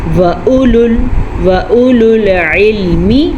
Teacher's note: وَأُولُو الْعِلْمِ، عین کا مخرج کا دھیان رکھیں، یہ جو عین آپ کو نظر آ رہا ہے یہ حلق سے نکلتا ہے اور اس کا مخرج کافی واضح ہے۔